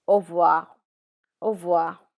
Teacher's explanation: But R is normally silent when you're saying au revoir. So in informal conversations and when you're talking, it's au revoir, au revoir.